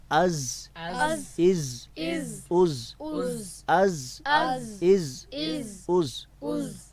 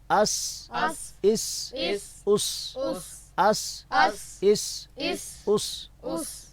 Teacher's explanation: یعنی ان حروف کے ادا کرتے وقت منہ سے سیٹی نکلتی ہے